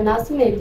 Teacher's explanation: A palavra nascimento tem 10 letras e apenas 8 fonemas. Não se pronuncia o S. E o E e o N, eles têm um único som.